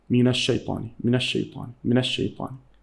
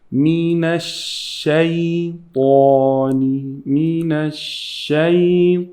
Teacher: give the time for the sheen in the word الشيطان